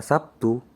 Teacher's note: Bunyi B pada kata Sabtu dilafalkan P. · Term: Asimilasi